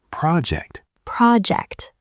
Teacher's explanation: The second part, ject, is very quiet and short. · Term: stress